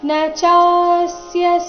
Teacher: ಕಶ್ಚನ ಕ ಮೇಲೆ ಆಘಾತ ಮುಂದೆ ಸಂಯುಕ್ತ ಅಕ್ಷರ ಇದ್ದ ಕಾರಣ ಕಶ್ಚನ ನಚಸ್ಯ ಚ ದೀರ್ಘ ಬಂದು ಸೌಮ್ಯ ಆಘಾತ ಮುಂದೆ ಸ್ಯ ಇದ್ದ ಕಾರಣ